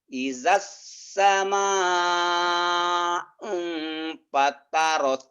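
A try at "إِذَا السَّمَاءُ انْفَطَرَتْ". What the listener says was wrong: Fatorot. fatorot. Fatorot lah. Idas. Da-nya jadi S. S-nya jadi da. Idas sama. Idas sama. Idas sama fatorot.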